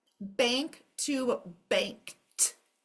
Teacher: The K's are all going to be quiet at the end.